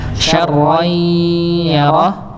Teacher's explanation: tanwin bertemu dengan ya dibaca dengung atau idgham bi gunnah